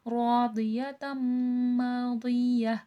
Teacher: رو پہ الف مدہ ہے، الف سے پہلے زبر ہے، کھینچ کے پڑھا جائے گا۔ میم پہ میم مشدد ہے، غنہ کر کے پڑھا جائے گا۔